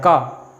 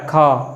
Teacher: का को बोलने में हमें थोड़ा कम समय लग रहा है का, लेकिन खा को बोलने में थोड़ा ज़्यादा समय लगता है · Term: अल्पप्राण